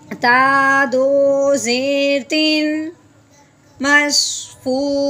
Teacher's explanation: آگے حمزہ حرف الکی میں سے ہے تو تنوین پہ غنہ نہیں کریں گے، اظہار کے ساتھ بغیر غنے کے پڑھیں گے